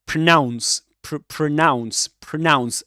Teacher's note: A schwa in the first syllable.